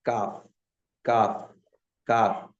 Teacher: जुबान की जड़ से कुछ पहले का हिस्सा जब वो ऊपर के तालू से लगेगा तो उसे काफ अदा होता है · زبان کی جڑ سے کچھ پہلے کا حصہ جب وہ اوپر کے تالو سے لگے گا تو اس سے کاف ادا ہوتا ہے